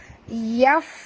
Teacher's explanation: Yaf bunyikan hamas pada fa, ketap gigi atas ke bibir bawah. Yaf keluar angin. Yafqahu, qaf tebal.